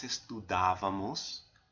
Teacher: accenting that third to last syllable on that form